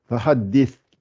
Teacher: Et le sa pour la sortir, c'est fahaddis. Le sa, c'est l'extrémité des dents du haut avec le bout de la langue.